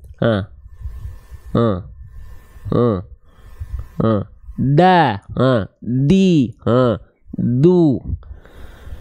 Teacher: Ujung lidahnya kita sentuhkan dengan pangkal gigi seri atas kita. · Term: huruf dal